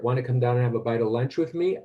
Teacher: So it's like a clause with final high rising intonation.